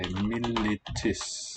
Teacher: In Latin, the vowel is raised, and we say militis.